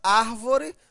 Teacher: tônica olha só a última a penúltima e a anti penúltima a sílaba tônica é a anti penúltima portanto uma proparoxítona